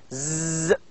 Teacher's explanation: We can feel the vibration. That's why it is a voiced sound.